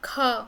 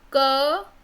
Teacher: when you are speaking ख, तो वहाँ पर एक ऑब्स्ट्रक्शन आ रहा है, और क में ऑब्स्ट्रक्शन नहीं है, केवल वाइब्रेशन है